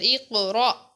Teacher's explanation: اب یہاں پر الف کے اوپر ساکن ہے، اس وجہ سے ہم الف کو پڑھیں گے اور تھوڑا جھٹکا دے کر